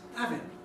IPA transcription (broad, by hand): ˡævɪŋ